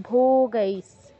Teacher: এখানে ভৌ তে দীর্ঘ করেননি দীর্ঘ করতে হবে ভো গাইস ভো তে গইতে দুটোতেই দীর্ঘ হবে হ্যাঁ আমি সুর